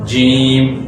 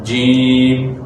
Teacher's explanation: جب آپ جیم پڑھیں گے تو آپ کو محسوس ہوگا کہ واقعی ہماری زبان درمیانی حصے سے اوپر کی طرف اٹھتی ہے